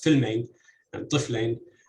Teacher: where the initial syllable in these 2 words is the stressed syllable. And the first word, for example, filmain, that has stress on the first syllable, also shows that even a word that is clearly borrowed, doesn't come from Arabic, shows in the initial stress pattern of the dialect.